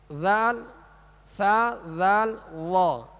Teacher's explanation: آگے ثا ہے، ذال ثا ذال وا، اس کا ایک ہی مخرج ہے، اس کا ایک ہی مخرج ہے، جو مخارج کی لسٹ میں ثا ذال وا کا مخرج شروع میں دیا گیا ہے، یعنی زبان کا سرا اوپر کے جو دو سامنے والے دانت ہیں اس کے اندرونی کنارے سے لگے تو ثا ذال وا ادا ہوتے ہیں